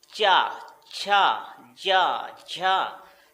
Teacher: तो जीभ सीधी उठ रही है और ऊपर चिपक करके तब नीचे आ रही है, तो उच्चारण स्थान हमारा ताल्व हो जाता है।